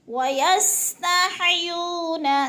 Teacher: سین کو سیٹی کی آواز میں